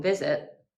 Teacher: in visit, the first syllable is stressed